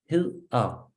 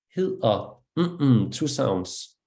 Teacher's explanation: And that's what is called in English a glottal stop, but it's like in Danish we call it stød, and stød means a shock. And we do this kind of bump in our breathing, which is very particular to Danish speaking.